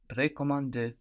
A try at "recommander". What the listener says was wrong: Good, but also the first E is more like je in this case. Recommander.